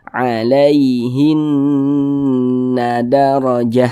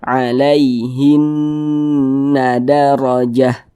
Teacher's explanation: nih berarti Nun bertasydidnya ini hukumnya ghunah musyaddadah karena dia gunah cara membacanya ya digunahkan digunahkan tuh ya didenggungkan jadi suaranya itu kita tahan kita panjangkan sejenak